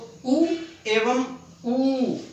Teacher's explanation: ये दोनों ध्वनियां होठों की सहायता से ही बोली जाती हैं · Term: ओष्ठ्य